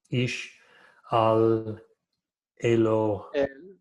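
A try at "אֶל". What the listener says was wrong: al, but el.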